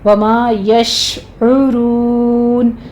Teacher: शीन पर तफशी होगी, यानी आवाज़ फैलेगी, ठीक है। और आइन के ऊपर ज़मा है, होंठ गोल कीजिए, आगे वही मदारिस वक्फ़ी हो जाएगी, अपने 6 काउंट कर लेना है।